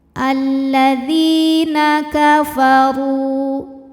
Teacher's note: huruf ra dibunyikan secara tafkhim karena berbaris dhammah, maka dibacanya tebal, pangkal lidah naik